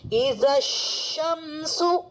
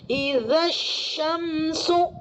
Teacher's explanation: شین کے اندر حروف تفشی کی صفت، مطلب تفشی کی صفت پائی جاتی ہے نا، اور حروف شجریہ میں سے آتا ہے. تو اس کو آپ نے شین کی صفت کے ساتھ ادا کرنا ہے، تفشی کی صفت کے ساتھ.